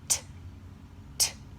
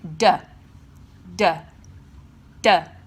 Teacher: The interesting thing about t and duh is that the only difference between these consonants is that one of them is unvoiced and one of them is voiced. So what this means is that they really line up as a pair because your mouth placement is exactly the same, which means that in a technical way, your pronunciation is the same.